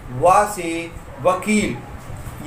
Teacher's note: ये वा जो है वो दंतोष्ठ से उच्चारित होता है